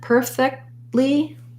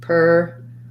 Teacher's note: It's easier to or it's more fluent to do the stop T and release right into the L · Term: stopped T